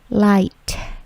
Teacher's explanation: Bunyi T-nya itu agak plosif atau memantul.